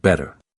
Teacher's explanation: Instead of pronouncing it with a hard T like some other English speakers might, Americans tend to soften it so it sounds like AD.